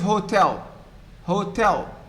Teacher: in the case of hotel hotel the second syllable stressed